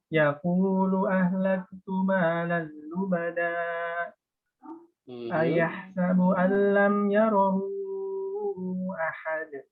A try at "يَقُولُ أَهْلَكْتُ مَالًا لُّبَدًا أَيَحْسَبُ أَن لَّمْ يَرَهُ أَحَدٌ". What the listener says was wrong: Jangan cepet-cepet aja. Kurangin sedikit lagi ritme bacanya.